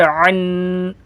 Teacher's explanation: عین دو زبر عن، عین کو حلق سے ادا کریں گے